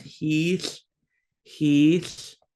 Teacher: remember double I's, we kind of draw it out just a little bit, not ridiculously long